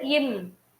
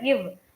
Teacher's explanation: இவ்னு சொல்லும் போதுதான் நம்மளோட மேல்வாய்ப்பல் கீழுதர வந்து டச் பண்ணுது. ஸோ இவ் அப்படின்றதான் சரியான விடை.